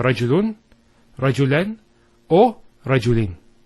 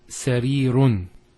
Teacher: it's giving the sound of a noon with a sukoon at the end of the word. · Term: tanween